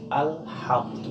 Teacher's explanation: Yang pertama, pada kata alhamdu seringkali terdengar alnya ini terpantul, sedangkan yang harus kita ucapkan yang paling baik, kata-kata al tertahan di langit-langit atas